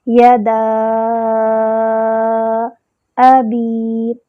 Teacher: حمزہ کا مخرج ہوتا ہے اقصی الحلق